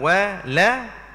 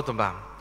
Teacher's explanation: Kalau wala, automatically jadi rendah dan jadi nipis dia punya cara sebutan.